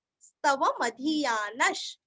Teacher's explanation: धृति स्मृति कीर्तिभिः। इमं अनुस्वार का उच्चारण आधा म, स्तव मधीयानश, मधी का धी दीर्घ और न के आगे विसर्ग का आधा श